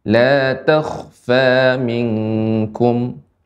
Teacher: Kha di sini huruf isti'la. ketika sukun dibaca dengan tebal, tidak takh, tidak dibuka, rangnya tidak diturunkan ke bawah, takh, tidak takh, ya.